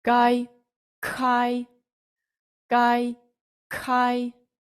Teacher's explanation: тут у нас буде звук к до якого ми так само маємо додати звук х